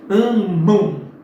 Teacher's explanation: Mas, cuidado, que aqui, por exemplo, em amam, de novo o A e o M, mas olha que você pronuncia esse M como se fosse um U